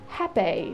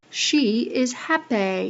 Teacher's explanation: So what if you had vowel breaking in a HAPPY word? This would result in happay [ɪi]. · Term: HAPPY-breaking